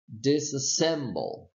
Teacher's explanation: If you take a look, you have a secondary stress here, so meaning the syllable dis will be secondarily stressed, and then the syllable sem will be primarily stressed